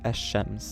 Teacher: the lamb is going to assimilate or become identical to the consonant that the word starts with